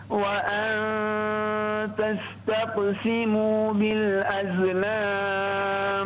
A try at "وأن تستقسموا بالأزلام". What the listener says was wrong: الأحرف الزاي من أحرف الصفير، لا تقلقلها. بالأزلام. لا، وأن تستقسموا بالأزلام.